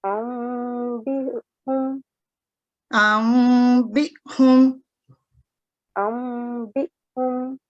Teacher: इकलाब, जिसमें हम नून साकिन की आवाज को मीम में बदल रहे हैं